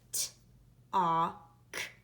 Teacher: And anytime I hear the sound ah before the sound k, I'm going to spell it A-L, and that L is actually silent. I don't hear the L in the word talk.